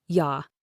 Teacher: the word you is very often reduced to a shorter, less stressed sound, ya.